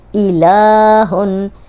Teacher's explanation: لام پہ کھڑی زبر تھی، لام کو ہم 2 حرکات لمبا کریں گے